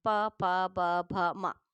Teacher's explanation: जब आप पा बोलेंगे तो पा में आपको ये दोनों होठ मिलेंगे आपस में